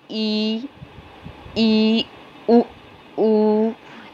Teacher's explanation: और समृद्ध, समृद्ध मतलब क्लोज, एकदम बंद, लगभग बंद। उच्चारण में मुख द्वार लगभग बंद रहता है, उसमें उसे समृद्ध स्वर वर्ण कहते हैं।